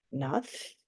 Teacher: Schwa sounding like a short U instead of an O.